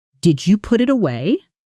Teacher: Notice the pitch lifts right at the very end. · Now rising for a yes or no question.